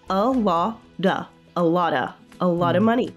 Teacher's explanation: So the A in a lot is pronounced as a schwa, a. And then we have the T in lot, which is pronounced as a flappy sound. · the T in lot, which is pronounced as a flappy sound. So we pronounce it as a duh.